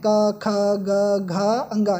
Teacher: यह हमारे कंठ से उच्चरित होते हैं